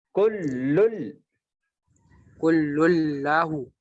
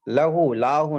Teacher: لام پہ تشدید ہے تو اس کو ڈبل آواز میں سختی کے ساتھ پڑھنا